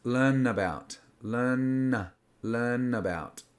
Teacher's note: The N makes a transition with the A, and the A becomes quite neutral. It's not A or about, it's So it's learn about.